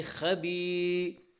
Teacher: یا ساکن سے پہلے زیر ہے اس لیے یا مدہ ہوا، اور یا مدہ کو ایک الف کے برابر کھینچ کر پڑھیں گے